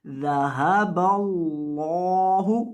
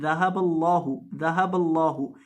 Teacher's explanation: لفظ اللہ کے لام کو موٹا کریں گے اور لمبا کریں گے